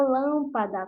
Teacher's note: como vocês podem observar o lan é pronunciado com mais força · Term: sílaba tônica